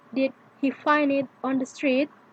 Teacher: yes or no questions did he find it on the street often have a rising end but not always